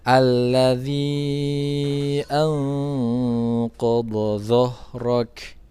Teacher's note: huruf Kaf yang sukun karena waqaf dia ada aliran udara yang keluar